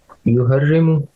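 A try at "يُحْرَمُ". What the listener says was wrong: نہیں یوہر ریمو تو معلوم ہے نا، مجہول میں عین کلمہ پہ فتحہ آتی ہے نا. یحرم.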